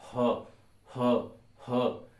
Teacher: कंठ में आता है अ आ क और ह और विसर्ग